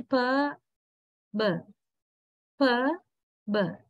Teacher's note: Or B, more vibrations are there. Yeah, when we say b, we can feel the vibration quite a lot rather than per. Per, when we say per, actually the sound is produced somewhere in the mouth only, right?